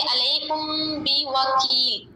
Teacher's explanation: अगर मीम साकिन के बाद बा आ जाए तो वहाँ पे इख्फ़ा होगा, मतलब उसमें हम गुन्ना करेंगे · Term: इख्फ़ा शफ़ी